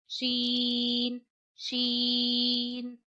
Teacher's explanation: जा सीन शीन शीन शीन जबान के दरमियान और ताल्लु के दरमियान से अदा होता है, यानी जबान का दरमियान वाला हिस्सा उठाइए और जहां जबान के दरमियान के ऊपर वाली जगह है ताल्लु की वहां लगाना है